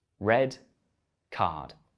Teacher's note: in my accent I only pronounce the letter R when a vowel sound follows so I pronounce the r in red but not the r in card